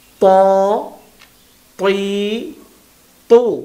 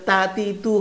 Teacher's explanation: ত ত ত আমরা জবর জের পেশ দিয়ে বলার চেষ্টা করছি, ত তৈ তো মোটা হবে, আর তা যেটা সেটা তা তি তু হয়, পাতলা